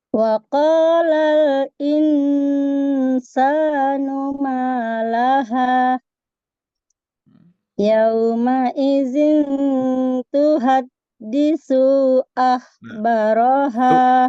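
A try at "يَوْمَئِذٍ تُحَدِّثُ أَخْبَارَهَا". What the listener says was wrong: Hati-hati, Bu. Thu, ro-nya juga pendek. Yauma idzin tuhadditsu. Dithu. Kira-kira panjang tidak, Bu? Dithu. Enggak ya? Tuhadditsu Tuhaditsu. Langsung.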